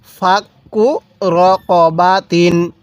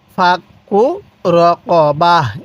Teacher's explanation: ওয়াকফের সময় আমরা এই তাকে হা বানিয়ে দিব তাহলে ফাকু রকবা এরকম ভাবে পড়বো এরপরে হামজা ওয়াও জবর আও